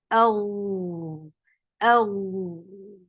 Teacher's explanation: The sound should flow in a straight position. No ups and downs. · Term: rakhawa